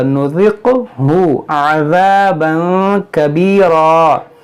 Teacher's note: قاف میں قلقلہ ہوگا